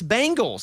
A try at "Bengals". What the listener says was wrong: You're saying bang, like boom, bang. Bengals. Yeah, like Ben Gay.